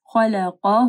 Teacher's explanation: خا اور قاف کو موٹا پڑھنا ہے